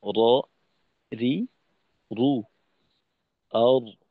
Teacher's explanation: জিহ্বার আগার নিচের দিক ব্যবহার করা হয় না, বরং জিহ্বার আগার উপরের দিকটাকে ব্যবহার করা হয়